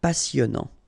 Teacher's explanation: Final T not pronounced, and then here you get this en sound.